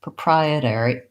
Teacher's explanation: And so the only difference there is instead of an or, with OR pronounced ER, proprietary, we do have some changes. So this flap T is no longer a flap because this T starts the syllable terry. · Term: regular T